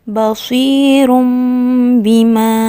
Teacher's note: Tanwin bertemu dengan huruf ba, iklab.